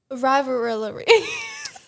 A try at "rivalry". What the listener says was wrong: You said arrivability. Rivalry.